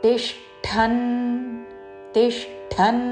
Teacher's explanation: తి పక్కన మూర్ధన్య ష కి మహా ప్రాణము ఠ వత్తు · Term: మహాప్రాణాక్షరము